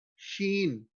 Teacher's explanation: rising the tongue towards the hard palate produces the sheen